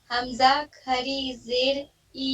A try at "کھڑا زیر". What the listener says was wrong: کھڑی نہیں کھڑا زیر. کھڑا ٹھیک ہے.